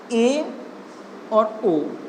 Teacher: जिन स्वरों के उच्चारण में मुख द्वार आधा बंद रहता हो, उन्हें अर्ध संव्रत कहा जाता है।